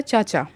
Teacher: तो आप जानते हैं कि च वर्ग जो है वह तालव्य ध्वनि है।